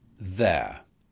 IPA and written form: ðeə (there)